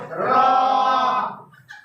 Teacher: জিহ্বার আগার উল্টো পিঠ, তার বরাবর উপরে তালুর সঙ্গে লাগিয়ে র।